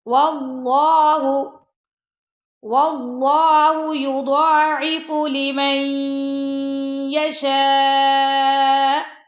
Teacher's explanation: اب اللہ کی لام کو موٹا پڑھیں گے کیونکہ اللہ کی لام سے پہلے زبر آ گیا ہے